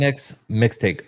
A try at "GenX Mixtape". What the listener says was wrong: Tape. Enunciate your words. With a P. Tape.